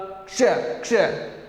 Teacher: क और श से मिलकर क्या बना हुआ है, ये श बना हुआ है, यानी जो यह श है, एक जो अक्षर है इसमें दो मिले हुए हैं आदि। क, पहले क का प्रयोग होगा फिर श का प्रयोग होगा, क्ष क्ष क्ष, यानी आधा क और श इसमें जुड़ा हुआ है, तब ये श बना है।